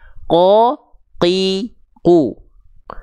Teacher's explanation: huruf qaf nggak boleh ketika dilafalkan keluar percikan-percikan nafas.